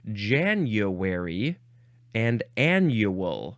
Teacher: The y sound heard from many speakers is not an intrusion, but rather a common pronunciation of the vowel u after a consonant